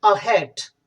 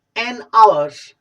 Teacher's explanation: लेकिन जब हमने बात की हैट की, तो इसके अंदर एच क्या है, वो साइलेंट नहीं है, वो क्लियरली सुनाई दे रहा है।